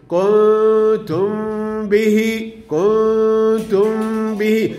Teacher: الميم مع الباء بعملها إخفاء شفه أقول كده. كنتم به كنتم به هنا إخفاء في النون وإخفاء بالميم مع الباء.